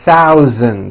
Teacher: the voiced Z sound, Z, in the word thousand